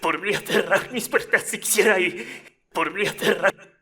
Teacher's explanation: I forgot to change my pronunciation of cerrar here, and I pronounced it more so in the Spanish way with the theta.